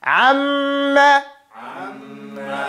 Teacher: The meme is the type of sound that you cannot pronounce it clearly without pressing your lips together.